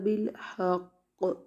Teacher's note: قاف کو جب وقف کریں گے تشدید باقی رہے گی لیکن زیر نہیں پڑیں گے